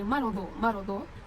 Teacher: dot berharakat fathah tanwin dan diwaqaf. Cara membacanya tanwin dihilangkan dan panjangnya 2 harakat. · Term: mad iwad